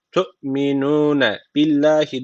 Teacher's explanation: Allah lafzı burada ince okunacak. Çünkü öncesindeki harfin harekesi altta. Allah lafzının alttan giriş yapılıyorsa ince okunuyordu Allah lafzı.